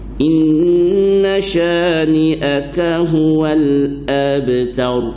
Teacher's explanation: Ab masih mendetak, qalqalah sughra